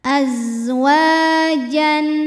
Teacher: Hukum tajwidnya adalah mad tabi'i dhahiri sebab ada alif sebelumnya berharokat fathah. Cara bacanya huruf waw ini panjang 2 harokat.